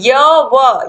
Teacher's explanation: इनके बोलने से मुख द्वार बहुत सकरा हो जाता है और हवा स्वर की भाति बीच से निकल जाती है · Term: अर्ध स्वर